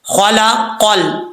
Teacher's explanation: آگے ہے خا حروف مستعلیہ میں سے پر پڑھا جائے گا، قاف حروف مستعلیہ میں سے پر پڑھا جائے گا، لیکن آپ نے خاص خیال رکھنا ہے کہ خا اور قاف کو پر پڑھتے ہوئے لام کو موٹا نہیں کرنا، لام کو پر نہیں پڑھنا، لام بریک پڑھا جائے گا